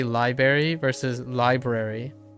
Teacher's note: between vowels there may be a plus or minus r sound in English in American English